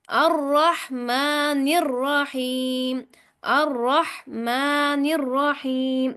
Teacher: الرح، را زبر ح، رح، ما، پھر نر، نون کو را سے ملاتے ہوئے سختی اختیار کرنی ہے شد کی وجہ سے، اور پھر را کو موٹا پڑھنا ہے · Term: را موٹی